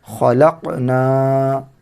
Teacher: قاف میں قلقلہ کرنا، حروف قلقلہ میں سے قاف ہے